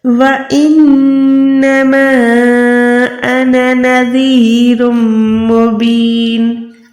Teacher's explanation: देखिए कुरान पाक में कहीं पर भी अना लिखा हुआ हो तो आपने क्या करना है, अलिफ को अदा नहीं करना, सिर्फ नून ज़बर न करके पढ़ना है · 2 से 3 सेकंड माँ को खींचना है। अगर बड़ी मद होती तो हमने 5 से 6 सेकंड खींचना होता। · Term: छोटी मद